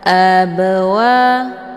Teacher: cara bacanya huruf b-nya dipantulkan dengan pantulan ringan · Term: Qalqalah, qalqalah sughra